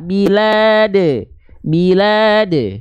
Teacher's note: jadi seperti ada bunyi vokal e di ujungnya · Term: qqolah